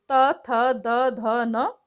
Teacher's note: दंत ऊपरी दांतों के निकट से